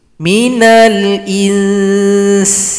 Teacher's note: Berikan dulu ikhfa pada huruf nun berjumpa sin ini, baru diberikan vokal huruf sin.